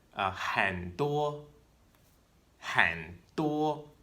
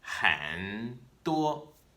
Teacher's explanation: it's almost like you're cutting away that last rising part of the third tone and just keeping the part that stays down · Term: half third tone